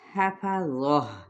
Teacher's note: حفظہ ہا وسط حلق سے، ذو حروف مستعلیہ میں سے ہے، جب ہم گول تا پہ وقف کریں گے تو یہاں پر وقف بالابدال کہلائے گا، کیونکہ ہم نے گول تا کو ہا میں بدل دیا۔